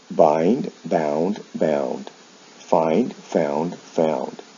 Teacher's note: they involve a vowel change in the past and the past participle from I to ow. The consonant sounds remain the same.